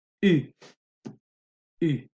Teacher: La langue est derrière, ou. Et pour prononcer en français, la langue doit aller à l'avant. Donc, ou, la langue derrière, U, la langue devant.